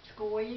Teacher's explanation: there's a TS sound that I hear whenever I say Skoye